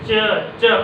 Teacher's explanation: देखो ये देखो ना, जब च बोलोगे तो तालु को छुएगा, च च ऊपर वाला को छू जाता है तालु को, तो च छ। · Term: तालव्य व्यंजन